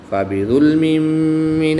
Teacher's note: دو زیر کی تنوین کے بعد میم حروف یرملون میں سے ہے تو یہاں پر ادغام مع الغنہ ہوگا، یہاں پر بھی غنہ کر کے پڑھیں گے۔